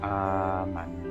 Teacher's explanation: Cara bacanya seperti mad tabi'i yaitu 2 harokat. · Jadi alif fathah ketemu hamzah sukun menjadi amanu. Di sini hamzah sukunnya dihilangkan menjadi fathah berdiri. Panjangnya 2 harokat. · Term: mad badal